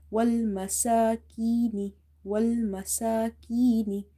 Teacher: Sin is stretched because of vertical harka. · Ya is from the madda letter, so you read it by stretching it up to one alif.